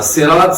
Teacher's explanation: سرات نہیں پڑھنا، سرات سین کے ساتھ ہو جائے گا، سین باریک ہوتا ہے